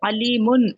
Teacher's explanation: ہمیں تھوڑی دیر کے لیے غنہ کرنا ہے، ان کی آواز ناک میں لانا ہے